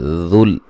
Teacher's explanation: ذال کو نرم ادا کریں گے اور باریک پڑھیں گے